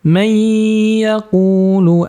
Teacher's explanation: May didengungkan, suaranya keluar dari hidung.